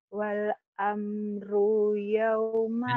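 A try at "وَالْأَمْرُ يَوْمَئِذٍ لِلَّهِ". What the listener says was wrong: pendek, tapi idil. Wal amru yaum pendek.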